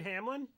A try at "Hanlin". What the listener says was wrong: There's no characters named Hamlin. There's one named Hanlin. Han, like as in Han Solo.